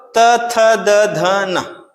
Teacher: तो जीभ जो है किस में आके टकराएगा, दांत में आएगा, और दांत में आएगा मतलब दांत से टकरा रहा है, इसलिए दंतव्य बोल देंगे · अब जब बोलेंगे तो जो जीभ है, तो जीभ के जो सामने वाला हिस्सा है वो डायरेक्ट आके दांत में टकराएगा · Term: दंतव्य व्यंजन